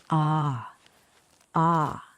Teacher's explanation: this is a back open vowel made with your mouth relaxed and open tongue low and back giving it that smooth warm vibe